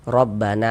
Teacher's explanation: maka huruf yang memiliki tanda baca fathahnya itu dibaca panjang, sehingga na dibaca panjang. Mad tabi'i panjangnya tuh 2 harokat.